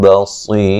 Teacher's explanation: بصی صاد کو موٹا ادا کریں گے اور را کو وقفاً باریک پڑھیں گے. ملانے کی صورت میں را موٹی ہوگی